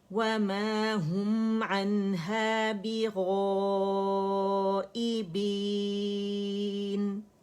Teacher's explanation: 4 counts ہم نے اسے اسٹریچ کیا, اور پھر نون کو ہم نے سکون کے ساتھ پڑھا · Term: مد عارض سکون